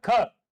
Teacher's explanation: तो जैसे कि मैं कहूं ये लो क तो ये जो ख है वो बना किससे? क और इसके साथ में ह की ध्वनि से। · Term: महाप्राण